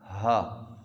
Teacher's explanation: ये जो हा है इसको मोटी आवाज़ में पढ़ना है